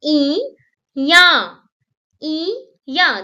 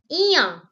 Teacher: The sound is coming from the nose area, from palate and nose. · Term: nasal sound